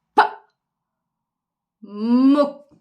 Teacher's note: diyelim pa muk burada derken nefes çıkışını Hissettir çocuğumuza daha sonra muk derken orada dudaklarımızın yavaşça kapandığını M ve sondaki k sesini Hissettir